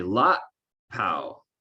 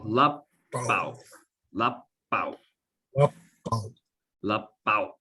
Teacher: But what happens a lot of times with this word is people say lot pow, but it's lap pow, lap pow. See how my lips are touching with the p, so that makes the long P. Lap pow, lap pow, lap pow.